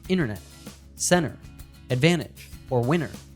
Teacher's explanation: In words with an NT combination, we often drop the T sound like internet, center, advantage, or winner.